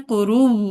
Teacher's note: वक्फिल इस्कान करते हुए आखिरी हर्फ की हरकत सिर्फ नहीं पढ़नी, तशदीद बरकरार रखनी है